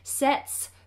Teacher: the S on the end of sets is an S sound and not a z